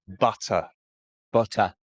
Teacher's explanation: I am not pronouncing the T. So the sound T is replaced by glottal stop.